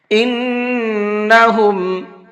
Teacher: نون کے اندر غنہ کر کے پڑھیں گے اس لیے کہ نون کے اوپر تشدید ہے